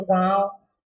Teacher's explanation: जब हम बोलते समय नाक और मुंह गले से दोनों से आवाज निकाले तो वहां क्या होगा, अनुनासिक।